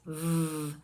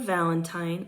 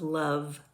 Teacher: V is a voiced labio Dental fricative